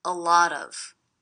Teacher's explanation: I hear these three words as one unit. A lot of, with the stress happening on the middle word.